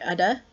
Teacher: Probably the easiest to get at for Australian English speakers is this tap, which is like the double T in butter